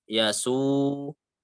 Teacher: Nah, dibacanya 2 harokat gitu ya. Nggak boleh terlalu panjang, juga nggak boleh lebih pendek dari 2 harokat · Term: mat tabi'i